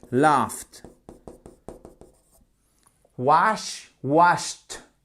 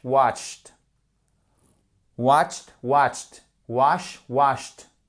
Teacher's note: Si ça se termine par un che, un fe, un que, donc en fait ce sont des sons qui n'utilisent pas les cordes vocales, vous prononcez comme un te.